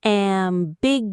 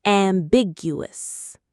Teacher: The syllables are am, big, uh, us. The strongest, most stressed syllable is big.